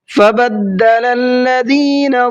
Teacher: دال کے اوپر تشدید ہے، ڈبل پڑھیں گے اور بغیر کھینچے پڑھیں گے